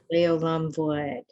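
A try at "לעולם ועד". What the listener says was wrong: exactly.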